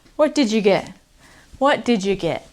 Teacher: with the d and the y we turn into didja